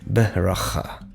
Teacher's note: In this case, the schwa is almost pronounced as an eh sound, but it literally is beracha. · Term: vocal schwa